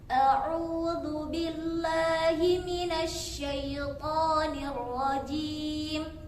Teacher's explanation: jim di sini memiliki sifat asyiddah, yaitu kuat. Jim jadi harus lebih ditegaskan lagi, dikuatkan lagi ketika mengucapkannya.